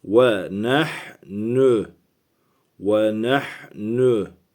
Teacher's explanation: Gırtlağımızın aşağısını kasarak h yapacağız.